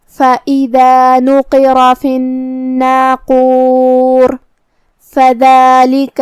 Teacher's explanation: اور اگر یہ کلمہ کو اگلی آیت کے ساتھ ملا کے پڑھے تو پھر راء کا حکم ہوگا ترقیق، مطلب ہم راء کو پتلی آواز میں پڑھیں گے کیونکہ اس کے نیچے زیر ہے · یہاں حرف النون پہ تشدید ہے لہذا 2 حرف کے برابر ہمیں نون کو پڑھنا ہے کیونکہ تشدید کی اصلیت 2 حرف ہے.